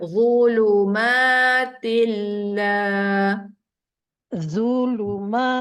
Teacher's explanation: lidah keluarkan Zu tebal